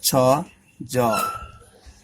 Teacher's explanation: Affricate sound is cha, jaw. They are in between stops and fricative. They are longer than stops and shorter than fricative.